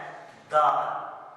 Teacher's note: उसके बाद हमारे पास वर्ड जो है वो है दाल। इसको दाल को पढ़ते हुए देखिएगा हमारी जुबान जो है ऊपर वाले दांतों के पीछे जाके बिल्कुल लगती है